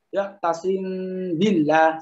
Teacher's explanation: Lalu setelah siap-siap untuk membaca ba, dilekatkan ba, ya tasim billah seperti itu. Jadi bibir akan kuat tekanannya ketika melafazkan huruf ba. Namun ketika melafazkan huruf mim hingga gunahnya itu tekanannya berkurang. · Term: ikhfa syafawi